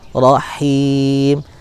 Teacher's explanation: Ha berharokat kasroh punya sifat rokhwah, hams, dan dia istifal ya, mengalir. Kemudian dia ada hamsnya, desis, tapi lewat bunyi yang bukan melalui dari pita suara.